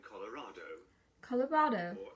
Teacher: we only pronounce the R when it's followed by a vowel